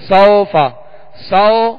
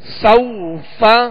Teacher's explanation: سوفا سو یہ مجھول ہے اور سوف یہ معروف طریقہ ہے